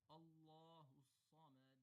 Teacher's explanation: So say it slowly and make sure that you're pronouncing the Sad clearly and holding and stretching and emphasizing that shidda. So that shidda should be respected, should be properly pronounced. · the Sad is heavy, but the Meme and Dal are both light. And of course the Dal is the letter of Qalqala, Qaf, Ta, Ba, Jim, Dal.